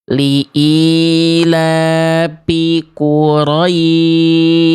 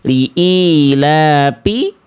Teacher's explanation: Harusnya fa itu mengalir nafasnya.